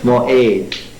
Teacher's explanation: Usually it's pronounced simply as a glottal stop.